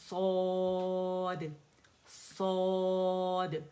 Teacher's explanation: مد لیٹر سے اسٹریچ کر رہا ہے، ٹھیک ہے، آواز اوپر جائے گی، صاد. اور کھولیں منہ، الجوف کھولیں، صاد، کیونکہ الف مدہ بن رہا ہے اور یہ وہیں سے ادا ہوگا.